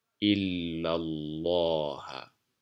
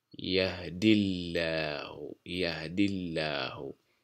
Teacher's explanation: Et elle est légère lorsque la lettre qui précède le nom de la majesté porte la kasra.